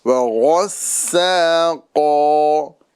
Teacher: سین کو باریک اور غین کو پر کرنا ہے